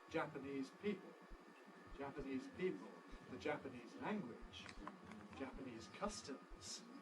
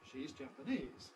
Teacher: we then tend to alter the balance of power between these two stresses so that the first one sounds stronger than the second one